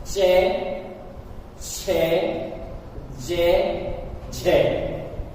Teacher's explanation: वे वर्ण जिनका उच्चारण करते समय जिह्वा को थोड़े संघर्ष की आवश्यकता होती है, अथवा जिह्वा रगड़न खाते हुए वर्णों का उच्चारण करती है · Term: संघर्षी स्पृष्ट